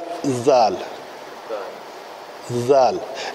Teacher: ये ज़बान जो है आके सनाया उलिया, सनाया उलिया कहते हैं, उलिया से मुराद ऊपर वाले, सनाया दो, ये जो ऊपर वाले दो दांत हैं इनके साथ आके ज़बान पीछे से थोड़ी सी टच करे